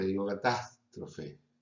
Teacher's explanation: la pérdida de la S final por aspiración, final de sílaba